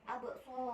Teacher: Selanjutnya pada ayat abso terdapat hukum tajwid yaitu khalqala sugro, cara membacanya yaitu dipantulkan secara ringan